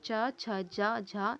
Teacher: इनका उच्चारण तालव्य की सहायता से होता है तो ये तालव्य ध्वनियां कहलाती हैं